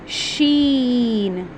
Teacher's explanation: शीन को हम अदा करते हैं जो हमारी जुबान का जुबान के दरमियान और तालू के दरमियान से अदा होते हैं।